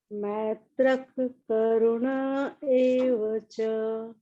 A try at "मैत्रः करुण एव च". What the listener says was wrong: Ma'am मैत्रक नहीं, मैत्रक, मैत्रक, मई आई आई, मैत्रक, हाँ, मैत्रक करुण एव च। मैम मैत्रक ख नहीं आएगा क्योंकि यहाँ पे ख आधा है, तो इसलिए आप मैत्रक के बाद पॉज मत लीजिए, तुरंत करुण शुरू कर दीजिए।